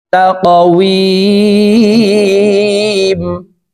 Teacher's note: তা কফ জবর তাক, ওয়াও ইয়া জের উই, মিম ২ জের মিন, তাকওয়িমিন। উই ৩ আলিফ টেনে মিমকে সাকিন করব, কারণ মধ্যে আরজি ৩ আলিফ টানিয়া পড়িতে হয়।